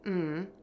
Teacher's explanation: saying mm with your lips closed and the air moving through your nose